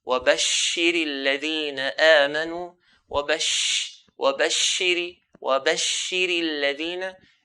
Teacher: If I say this word, if I pronounce as وَبَشِّرِ الَّذِينَ, I've not given the characteristic of the sheen. Characteristic of the sheen is that whenever it's pronounced, there should be a spread of the sound.